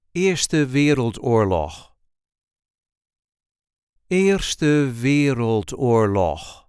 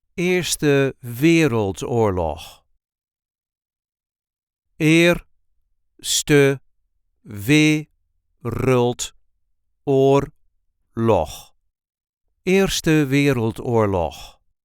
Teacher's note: There is a light emphasis on the first syllable of the second word.